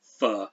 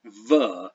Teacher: voicing is the difference between the F sound, f, and the V sound, v, and those are phonemes.